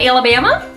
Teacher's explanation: she's doing a good job on that Rising intonation